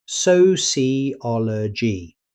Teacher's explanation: The stress falls on ol. So don't compress it into three or four syllables.